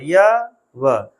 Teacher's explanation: य, व बिना मेहनत के, बिना किसी संघर्ष के आते हैं। ये संघर्षहीन हैं, मतलब 2 व्यंजन हमारे पास हैं जिनमें कोई संघर्ष नहीं करना पड़ता।